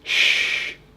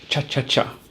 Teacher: The sh sound can go on for a long time, where the ch sound is short and can be done rapidly.